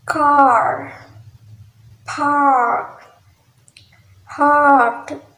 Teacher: this is the open front unrounded vowels